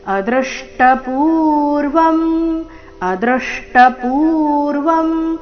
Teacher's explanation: ಸಕ್ಯುಪ್ರಿಯಪ್ರಿಯರ್ಹಸಿದೇವಸೋಂ ಅದೃಷ್ಟ ಪೂರ್ವಂ ಋಷಿತೋಸ್ಮಿ ದೃಷ್ಟ್ವ ಭಯೇನಚಪ್ರವ್ಯಥಿತಂಮನೋಮೇ ತದೇವಮೇದರ್ಶಯದ ದೇವರೂಪಂ ಪ್ರಸಿದ ದೇವೇಶ ಜಗನ್ನಿವಾಸ ಅದೃಷ್ಟ ಪೂರ್ವಂ ಶಬ್ದದಲ್ಲಿ ದೃ ಮೇಲೆ ಆಘಾತ ಬರಬೇಕು ಅ ಮೇಲೆ ಆಘಾತ ಬರಬಾರದು